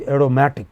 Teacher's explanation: The stress is on the pre-final.